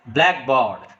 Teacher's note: The first part of the word is spoken with force.